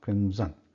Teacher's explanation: Because the ma is there because the both the lips are touching each other to pronounce ma